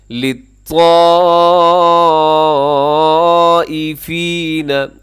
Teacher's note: یہاں پر بڑی مد ہے، مد متصل، حروف مدہ حمزہ ایک لفظ کے اندر 4 سیکنڈ تک اسے تو ضرور ہی اپنے لمبا کرنا ہے کیونکہ یہ مد، اسے مد متصل، مد واجب کہا جاتا ہے۔